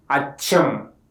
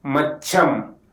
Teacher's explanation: The sound is produced by the tongue touching near the alveolar ridge, and the air flow is forced through the narrow gap. If the letter sa get doubled or geminated in a word level, it is pronounced as cha.